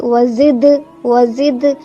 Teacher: دال جو ہے وہ قلقلہ حرف میں سے ہے، تو یہاں پہ ہماری آواز پلٹے گی